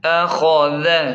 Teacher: حمزہ زبر ا، خا زبر خا، ذال زبر ذ، اخذ۔ خا کو موٹا اور ذال کو نرم پڑھیں